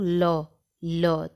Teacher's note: तो हमारी सांस जीभ के बगल से यानी पार्श्व से गुजरती है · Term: पार्श्विक व्यंजन